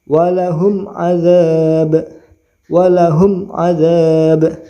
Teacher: maka dinamakan izhar syafawi izhar itu jelas syafawi itu jenis bibir jadi membaca mimnya jelas ya tidak boleh berdengung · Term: idhar safawi